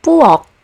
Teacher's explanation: For example, in the word pu, which means kitchen, you don't really hear the aspiration anymore. Once again, it's pronounced as p.